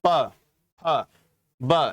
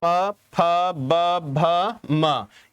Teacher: अब आता है आपका प वर्ग, प वर्ग यानी कि जहां दोनों होठों से आपस में मिलते हो, प फ ब, यानी कि बोलने से पहले दोनों होठ आपस में मिल रहे होंगे